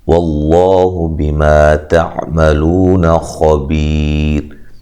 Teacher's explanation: لفظ اللہ کو موٹا ادا کرنا ہے، اس سے پہلے پیش ہے، زبر ہے